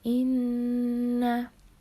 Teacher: termasuk hukum bacaan ghunnah karena ada Nun bertanda baca tasydid lalu dibaca dengan dengung dan ditahan sepanjang tiga harokat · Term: hukum bacaan gunah